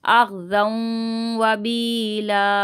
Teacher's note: ज़न यहाँ पे गुन्ना होगा